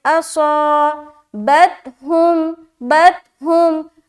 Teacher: صاد کو موٹا کرتے ہوئے الف مدہ کر رہے